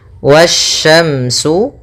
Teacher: Pada bacaan wasyamsu di sini ada alif lam syamsiyah, yang mana alif dan lamnya tertulis, akan tetapi alif dan lamnya tidak dibaca, sehingga kita langsung baca ke huruf setelahnya, yang mana sya termasuk huruf syamsiyah.